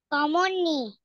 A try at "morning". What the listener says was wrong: হুম, মুন্নি না কিন্তু, মর্নিং, মর্নিং,